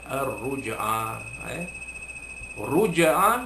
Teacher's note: iaitu qalqalah surah juga, kerana jim mati itu berada di tengah kalimah. Huruf jim mati itu berada di tengah kalimah.